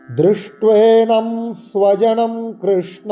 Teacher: যে দৃষ্ট্বে, এই মধ্যনাস এবং ট মূর্ধাবর্ণ, জিভকে করে উল্টো করে মূর্ধাস্থানে লাগিয়ে উচ্চারণ করতে হবে